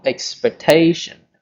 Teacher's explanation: the stress is on the third syllable, expectation